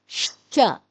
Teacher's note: شین پچھلی داڑوں سے ادا ہوتا ہے، آواز ہے ش۔